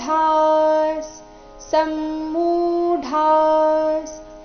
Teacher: ಮು ದೀರ್ಘ ಡ ಮಹಾಪ್ರಾಣ ದೀರ್ಘ · ವಿಸರ್ಗದ ಉಚ್ಚಾರಣೆ ಅರ್ಧ ಸ ರೀತಿ ಯಾಕಂದ್ರೆ ಮುಂದಿನ ಶಬ್ದ ಸ ದಿಂದಾನೆ ಶುರುವಾಗ್ತಾ ಇದೆ